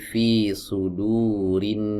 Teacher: hamzah wasal yang ada di sini ini berada di tengah kalimat, maka ia tidak dibaca ya. Tidak kita baca seperti ini.